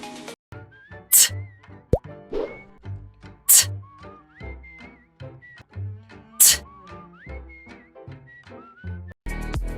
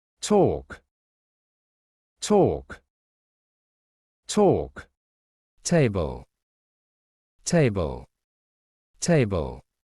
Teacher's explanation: The symbol T in the International Phonetic Alphabet, or IPA, represent a voiceless alveolar plosive consonant sound in English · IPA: /t/